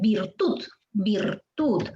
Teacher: Ahí está la fuerza de voz en tud.